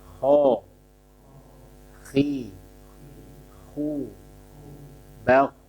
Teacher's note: Jadi kho tebal, semua kondisi fathah, kasroh, dhammah. Akan tetapi saat kasroh berkurang ketebalannya ya, tafkhimnya. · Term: tafkhim nisbi